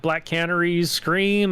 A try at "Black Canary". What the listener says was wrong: You said cannery. It's like this woman is not canning fish. No, you said You said cannery first.